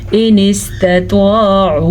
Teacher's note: ہم نون ساکن کو چھپے ہوئے غنے کے ساتھ پڑھیں گے